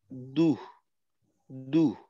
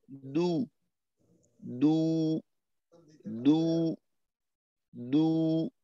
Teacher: শেষে একটু হর মতো ধ্বনি চলে আসলো বাতাসের। তো এটাকে আরেকটু নিয়ন্ত্রণ করা।